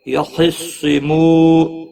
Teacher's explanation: خا اور صاد دونوں حروف مستعلیہ میں سے ہیں، پر پڑھے جائیں گے۔ مو واو مدہ ہے، ایک الف کے برابر کھینچ کر پڑھیں گے۔